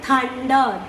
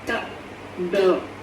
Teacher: For one sound, you will have only air passing out of your mouth. For the second sound, voice will come out.